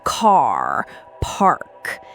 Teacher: in American English, it's almost always rhotic, so that R sound is really prominent